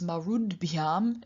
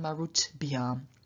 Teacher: And then we have marut plus bhyam, and because bhyam begins with a voiced consonant, b, the t at the end of marut then also becomes voiced, because marud bhyam is a lot easier to pronounce than marut bhyam.